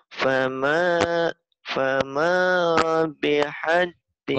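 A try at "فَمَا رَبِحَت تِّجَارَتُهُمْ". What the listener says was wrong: Kurang jelas ro-nya. Fama fama rabihat tijaratuhum. Jadi kamu tuh kalau ini ngomong kayak gini ditahan dipertahankan ya, yang kayak gini aja nih.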